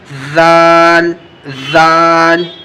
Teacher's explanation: دیکھیے زال کا تلفظ جب آپ کو کرنا ہے تو آپ کو دھیان رکھنا پڑے گا کہ دونوں دانتوں کے بیچ میں آپ کو اپنی زبان کی نوک جو ہوتی ہے نا، جہاں زبان ختم ہو رہی ہوتی ہے وہ رکھنا ہے دونوں دانتوں کے بیچ میں